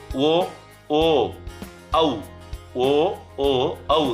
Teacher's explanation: ಓ ಓ ತುಟಿ ಎರಡನ್ನು ಕೂಡ ನಾವು ಮಡಿಸ್ತೀವಿ, ಆಗ ಕಂಠದಿಂದ ಬರ್ತಕ್ಕಂತಹ ಧ್ವನಿ ಹೊರ ಬಂದಾಗ ಈ ಅಕ್ಷರಗಳು ಹುಟ್ಟುತ್ತೆ. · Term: ಕಂಠೋಷ್ಟ್ಯ